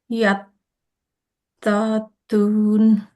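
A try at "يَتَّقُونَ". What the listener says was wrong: ইয়াত্তাকুন, এটা কফ।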